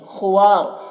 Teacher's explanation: ہاں میں الٹا پیش ہے، یہ واو مدہ کی طرح ہوتا ہے، اسے ایک الف کے برابر کھینچیں گے۔ خوار، خا حروف مستعلیہ میں سے ہے، اسے پر پڑھیں گے